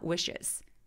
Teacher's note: wishes 할 때 입술 쭉 내미는 거 sh니까